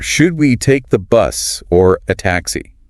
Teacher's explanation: Notice the upward inflection on bus and downward on taxi.